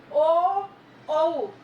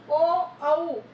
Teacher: कंठ ओष्ठ में, कंठ गले में से और होठों से जो साउंड निकलता है, जैसे ओ औ, देखो बोल के देखोगे तो गले में से भी एक साउंड आ रहा है और होठ हमारे गोल हो जाते हैं, ओ औ। तो इसलिए इसको कंठ ओष्ठ कहा जाता है।